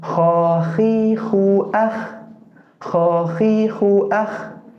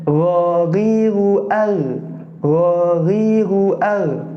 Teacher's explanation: Indikasi huruf itu terletak di makharijul huruf bagian atas itu semuanya ada gesekannya, Kho dan Gho. Meskipun huruf Gho itu tidak sebanyak gesekan dalam seperti huruf Kho. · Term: adnal halqi